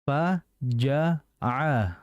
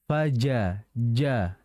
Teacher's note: Fa itu hamas, ja itu jahar. Maka jangan faja, jangan faja.